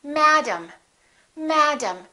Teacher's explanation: They're two different sounds because one vowel is stressed and one vowel is reduced.